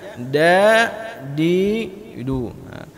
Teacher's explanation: ujung lidah kita berjumpa dengan pangkal gigi seri atas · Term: huruf Dal